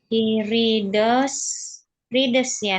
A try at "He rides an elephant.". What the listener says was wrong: Rights. Jadi huruf I itu bacanya I. Misalnya tulisannya I love you, I tulisannya I love you, bacanya I itu dibaca I.